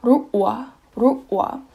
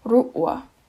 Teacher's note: Instead of a double kind of consonant thing, they just add a glottal stop for the first one.